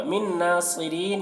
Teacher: मिन नासिरीन यहाँ पर नून साकिन, यहाँ पर देखिए नून साकिन के बाद नून है हुरूफ यूमिन में से, तो नून को नून से मिलाकर गुन्ना के साथ पढ़ेंगे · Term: इदगाम नाक़िस